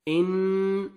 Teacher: नून साकिन के बाद हरूफ इख्फा में से सीन है, यहाँ पे आपने नोज में साउंड लेके जाना है